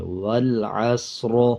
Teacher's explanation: اب پچھلے الفاظ کے اوپر زبر ہے تو را کو پر پڑھیں گے وقف کرتے ہوئے، یعنی موٹا پڑھیں گے۔